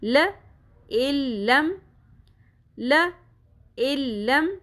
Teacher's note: حمزہ directly لام کے ساتھ مل جائے گا. حمزہ زیر لام لام زبر میم ساکن لم.